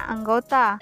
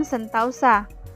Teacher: perubahan ini terjadi pada bunyi vokal tunggal o ke vokal rangkap au tetapi dalam pengucapan satu bunyi Puncak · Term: diftongisasi